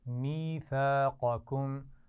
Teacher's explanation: قاف کو موٹا پڑھیں گے اور اس میں می یا مدہ ہے اور ثا الف مدہ کے ساتھ ہے